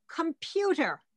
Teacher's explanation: Or the word computer, there's the M, there's the P. There's no vowel in between.